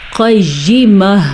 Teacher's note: موٹا قاف اور گول تا کو پھر سے ہم نے ہا بنا دیا